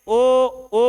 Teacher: ओ बोलोगे, फिर से वृत्तमुखी होठे बन रही हैं